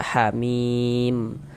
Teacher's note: Untuk di sini huruf mim yang ini nggak dibaca panjang, karena berwakaf di huruf yang nggak dibaca panjang, maka hurufnya kita sukunkan sehingga kita baca hamim seperti itu